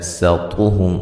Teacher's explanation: سین کو باریک، طا کو موٹا